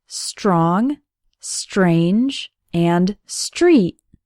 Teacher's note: St almost sounds like there's a CH sound in the middle